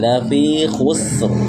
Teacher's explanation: Lamnya jangan dibaca tebal, jangan dibaca panjang. Kalau dibaca panjang maka maknanya nanti berubah.